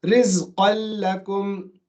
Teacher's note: So there's no noon now. It's become a lam.